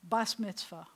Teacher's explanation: And that would be saying the Tav with no dagesh as a s.